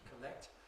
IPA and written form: kəˈlekt (collect)